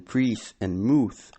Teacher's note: the long E and U as in prees and mooth started to break or diphthongize into A and U. Thus prees and mooth became praise and mouth.